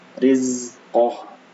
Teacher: Nah, ini hati-hati di huruf zai. Zai ini bukan termasuk huruf qalqalah ya. Jadi tidak boleh dipantulkan.